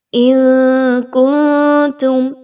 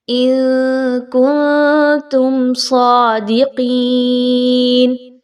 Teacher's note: اِن کنتم، دونوں جگہ پر اخفا کا اصول آئے گا، نون ساکن کے بعد کاف ہے اور پھر نون ساکن کے بعد تا کا حرف آ رہا ہے، دونوں جگہ پر آپ نے نون کی آواز کو مخفی رکھنا ہے، چھپانا ہے۔